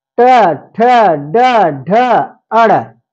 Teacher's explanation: माने जीभ को मोड़ा जाता है मोड़ देता है जीभ को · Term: मुर्धा